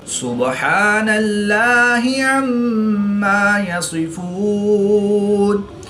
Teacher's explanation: با حرف قلقلہ میں سے ہے تو یہاں پر قلقلہ صغرا کر کے پڑھیں گے۔ اس میں دلالت اللہ عز و جل کے لام سے پہلے نون پر زبر ہے تو یہاں پر اس لام کو پر یعنی موٹا پڑھیں گے۔